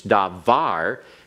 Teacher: First of all, it's davar because you have an accent on davar. It is a word that has its accent on the last syllable